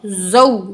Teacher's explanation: वाव साकिन मा कबल ज़बर, जल्दी से पढ़ेंगे, वाव लीन है